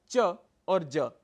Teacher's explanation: प्रथम और तृतीय वर्ण अर्थात च और ज अल्पप्राण है